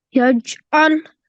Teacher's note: Ain, it comes from the middle of the throat